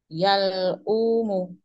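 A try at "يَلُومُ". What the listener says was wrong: Yang umuh nggak ada hamzah. Alif ya. Alif aslinya waw. Aslinya waw.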